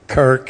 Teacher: a hard C or K at the beginning and at the end with an R in the middle and some kind of a vowel